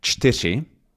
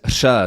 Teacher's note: So it's this voiceless alveolar trill sound. So it sounds like it exists in Czech, Norwegian.